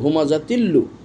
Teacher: তো এই যে তানবিনের পর লাম এসেছে, এই জন্য এখানেও ঈদগাম হলো, তানবিন ঢুকে গেল লামের ভিতরে উচ্চারণের ক্ষেত্রে, বানানোর ক্ষেত্রে নয়, কিন্তু ওই কোনো গুন্না চলবে না, সময়ক্ষেপণ চলবে না।